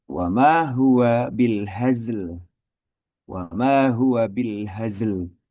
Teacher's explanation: Huruf zai sukun asli bertemu dengan huruf lam yang sukun karena sebab wakof. Harus dibaca jelas dua-duanya. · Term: dua sukun bertemu